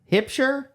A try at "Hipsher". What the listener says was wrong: Hipsher. Most people pronounce it Hipshire, hipster.